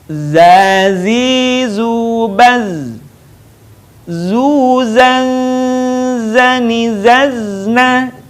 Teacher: Diucapkan dengan mengalir suara tanpa diiringi dengan mengalirnya udara. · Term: huruf za